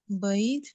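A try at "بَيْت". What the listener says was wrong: نہیں بیت. با یا زبر بئی آگے لمبی تا ہے. بیت.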